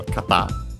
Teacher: kata on its own, accented on the last syllable. It means direction, way.